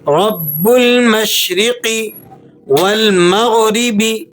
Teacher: غین جو ہے وہ حروف مستعلیہ میں سے ہے، تو اس کو آپ نے پر کر کے ادا کرنا ہے، اور را کو آپ نے باریک پڑھنا ہے۔